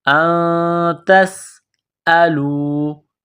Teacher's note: سین میں سیٹی کی آواز پیدا کرنی ہے